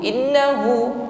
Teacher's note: Nun tasydid, ghunnah musyaddada. Dengungkan ya, jangan keburu. Innahu, tapi sempurnakan dulu dengungnya.